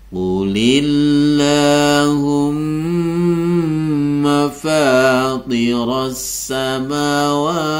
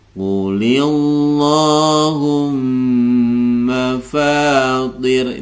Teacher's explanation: berharakat kasrah maka lafaz Allah ini akan menjadi e lafzul jalalah tarqik ya menjadi lafaz Allah tipis